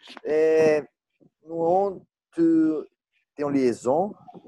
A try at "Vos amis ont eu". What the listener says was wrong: Ont eu, non. Ils n'ont pas liaison.